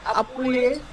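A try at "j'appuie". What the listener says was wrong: জাপুই আপুইয়ে না, জাপুই একসাথে,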